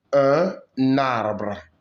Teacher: You use the N to form a syllable with the next A. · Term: liaison